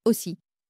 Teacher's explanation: Première façon, AU. Cette combinaison s'utilise généralement au début ou à l'intérieur des mots et elle produit toujours un O fermé